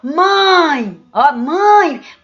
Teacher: um ditongo nasal porque o som sai trincado só de fechado a metade do ar ele sai pela boca e a metade sai pelo nariz